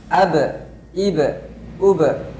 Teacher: Atau yang bertasydid ketika kita di akhir kalimat ab, ib, ub. Ada sifat pantulan ketika huruf ba disukunkan atau di akhir kalimat. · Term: qalqalah